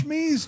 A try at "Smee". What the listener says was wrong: He is just Smee. You keep saying Shmee.